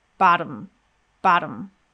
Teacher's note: So again, the T might be a little bit different than what you expect. This T actually sounds more like a quick D sound, and we go straight from that quick D into the M. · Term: syllabic consonant